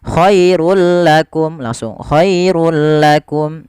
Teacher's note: Apa yang dimasukkan adalah bunyi suara nun sukun atau tanwinnya. Awalnya khairun, ketika bertemu lam langsung dimasukkan ke huruf lam tanpa ada penahanan. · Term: idgham bila gunnah